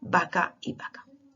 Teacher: el español peninsular no distingue la pronunciación bilabial de la pronunciación fricativa